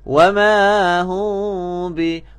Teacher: mulut tidak rapat dan dibaca dengan dengung samar-samar